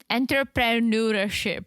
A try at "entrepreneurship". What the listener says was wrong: It's very, I mean, you threw in a couple extra consonants.